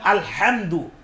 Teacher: কণ্ঠনালীর মধ্যখান থেকে হলকের মধ্যখান থেকে দুটি উচ্চারিত হয় আইন হা